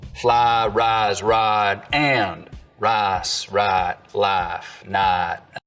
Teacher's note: In most of the Piney Woods belt, though, there's always been what we can describe as full price smoothing